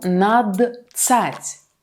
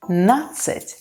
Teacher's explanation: The combination of letters d, c is pronounced as one long sound ц, natsat. For example, один plus нацать, adinatsat, одиннадцать.